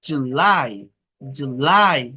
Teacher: লাই এর উপর জোর দিতে স্ট্রেস হয়